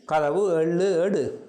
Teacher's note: முற்று இயல் உகரம் முழுமையாக ஒலிக்கின்ற இயல்பினை உடைய உகரம். அது இதழ் குவித்து உச்சரிக்கப்படும். உகரம் இதழ் குவித்து ஒலிக்கும். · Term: முற்றியல் உகரம்